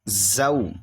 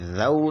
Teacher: سے ادا کریں گے ذال بھی، یعنی زا نہیں کریں گے، زا سختی سے ادا ہوتا ہے اور ذال نرمی سے ادا ہوتا ہے